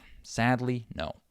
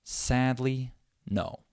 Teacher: I have 3 syllables. The first syllable is stressed, and the third syllable is stressed. Sadly, no. Okay, I have sad and no. · I have sad and no. Those are my stressed syllables.